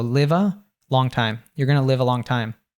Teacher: So he reduces the You're to yir, and going to of course becomes gonna, uh, the live and a - a becomes schwa, and they, they link together.